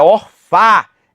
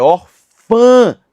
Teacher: a pronúncia que é nasalizada não é orfá, é orfã